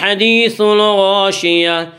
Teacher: الغاشیہ غین کو پر پڑھیں گے۔ غین حروف مستعلیہ میں سے ہے۔ · گول تا پر جو وقف کریں گے تو گول تا وقف کی صورت میں ہائے ساکنہ بن جاتی ہے۔